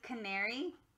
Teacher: these are schwas because they don't sound like their typical short or long A sounds